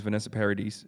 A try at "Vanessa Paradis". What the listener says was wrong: Paradis, don't pronounce the S. Just it's Vanessa Paradis. Okay, it's a French name.